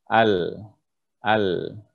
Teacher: huruf lam keluar dari ujung tepi lidah sampai ujung lidah yang dilekatkan dengan langit-langit atas bagian ujung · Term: jaher